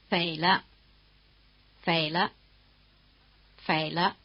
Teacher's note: the pitch of the neutral tone is near the top